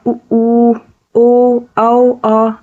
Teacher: पश्च स्वर सीधी बात है, जीभ का पिछला हिस्सा काम करता है इसमें